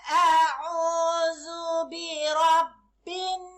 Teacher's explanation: Bacaan yang dibaca perlu dengung dua harkat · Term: wajibul ghunnah